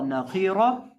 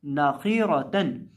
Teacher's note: ये जो हमारे पास खौ है और रौ है, इन दोनों को जब हम पढ़ेंगे तो इनको हम मोटा करके पढ़ेंगे